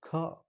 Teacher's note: ಖ ಅನ್ನುವಂಥದ್ದು ಎದೆ ಭಾಗದಿಂದ ಬರುವಂಥದ್ದು ಮಹಾಪ್ರಾಣಾಕ್ಷರ. ಜೋರಾಗಿ ಹೇಳಬೇಕು ಅಂತಿಲ್ಲ.